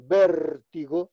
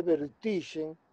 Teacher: Non é proparoxítono como vértigo, sino que é vertixe, paroxítono.